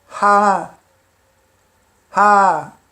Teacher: Esse H depois do A, ele tem sempre essa particularidade de puxar o som da vogal anterior. No início ele tem o som de Ha, e entre vogais ele tem a particularidade de puxar o som da vogal anterior, torna longo.